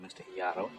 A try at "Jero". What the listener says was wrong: Why do you insist on mispronouncing my name, leaving the J silent? My name is Jero with a J.